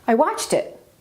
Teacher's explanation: I stressed watched because I and it are pronouns, so these words do not get stress generally.